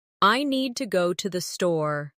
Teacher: The stress is on need and store. While to and the are softer and faster. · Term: rhythm